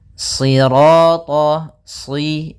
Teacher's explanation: karena shad itu pangkal lidah kita terangkat dan melekat karena dia huruf idbaq